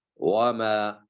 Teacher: اس پر صرف مد اصلی کی جائے گی، وما، بس زیادہ لمبا نہیں کریں گے اس کو